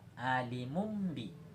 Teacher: jika nun mati atau tanwin bertemu dengan huruf iklab atau dengan huruf ba, maka suara berubah menjadi mim